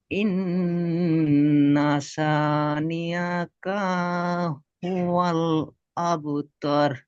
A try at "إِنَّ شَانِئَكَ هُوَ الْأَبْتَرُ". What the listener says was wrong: তর হয়ে যাচ্ছে, তর হবে না, তার। আর কাটা টান হবে না।